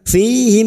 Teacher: mim sukun bertemu fa idhar safawi, mim sukun dibaca jelas tanpa mendengung